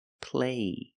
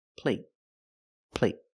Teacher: the stop T makes a vowel shorter